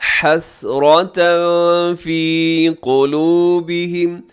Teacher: 2 زبر کی تنوین کے بعد فا ہے تو یہاں اخفا کریں گے